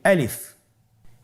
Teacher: আলিফ হরফটি মাখরাজ হলো আপনার মুখের শূন্যস্থান থেকে, গলা এবং মুখের শূন্যস্থান হতে আলিফ হরফটি উচ্চারিত হয়